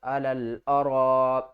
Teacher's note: لل، حمزہ زبر ا، علل ا، را الف مد زبر را، مد متصل ہے تو اس کو ہم نے 5 الف کی مقدار کھینچ کر پڑھنا ہے